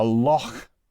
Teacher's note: the h sound is a little bit aspirated